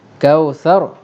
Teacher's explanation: Ra mati sebelumnya berbaris atas. Kalau ra mati sebelumnya huruf berbaris atas, maka ra tadi akan dibunyikan dengan tebal atas nama hukum ra tafkhim.